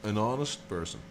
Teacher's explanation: Honest starts with an H. You write it with an H, but you don't say the H. It is silent.